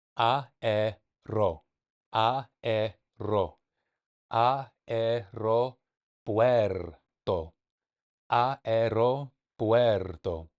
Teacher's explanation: I was blending both vowels A and E into one syllable, and it didn't sound right. It didn't feel right. And so I got to break it down. They're both their own syllables.